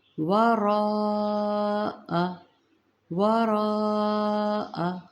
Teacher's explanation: ورا، ایک تو پہلی بات ہے را کو تھوڑا پر پڑھیے گا، آگے حمزہ ہے تو اوپر بڑی مد ہے، یہ مد متصل ہے، اسے 4 سے 5 حرکات لمبا کرنا ہے، جلدی نہیں پڑھیے گا۔